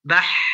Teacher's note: Yang kedua adalah huruf ha. Huruf ha itu ketika dia diucapkan tetap mengalir suaranya dan nafasnya. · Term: rokhwah